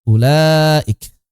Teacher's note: Di sini wawunya tidak memiliki fungsi suara.